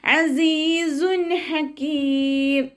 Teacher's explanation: സായുടെ സൗണ്ടിന് അസ് എന്നുള്ളൊരു sound ഉണ്ടല്ലോ, തേനീച്ചയുടെ മുളൽ പോലെയുള്ള സൗണ്ട്